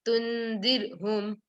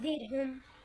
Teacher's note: Did ra with tarqiq and no qalqala.